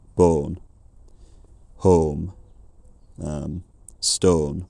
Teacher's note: a more neutralised form that sounds more like the Southern English form. Something with a back mid-height rounded monophthong, something like bone, home, stone.